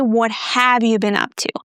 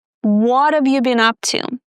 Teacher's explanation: They don't say, what have you been up to? Instead, they drop the H completely and they pronounce of, just the schwa sound, and then the v sound. What of, not what have, but what of.